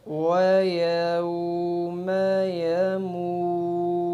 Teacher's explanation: یموت۔ واو ساکن کے بعد اگلے لفظ پہ رکنا ہے، تو واو ساکن کو 2 سے 3 سیکنڈ کھینچ کر پھر اگلے لفظ پہ رکیں گے